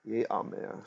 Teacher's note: instead, the chirik, the short vowel, lengthened to the long seri